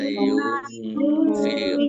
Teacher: Qaf dhammah wawu sukun mat tabi'i panjang 2 harokat